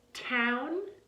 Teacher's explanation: Hopefully you're hearing that aspiration or that breath with the voiceless t.